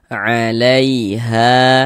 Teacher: Sehingga huruf ya sukun yang sebelumnya harokat fathah, maka huruf ya sukunnya adalah huruf lin. Maka kita baca lunak lembut. Alaiha, ha dibaca panjang.